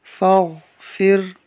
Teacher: غین جو کہ حروف مستعلیہ میں سے لہٰذا اس کو ہم پر پڑھیں گے، را کو باریک پڑھیں گے کیونکہ اس سے پہلے زیر ہے